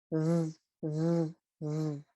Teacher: The voiced version of F is v, v, v. It's the V.